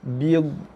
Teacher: Lidah naik ke langit, tekan kat langit. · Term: nun mati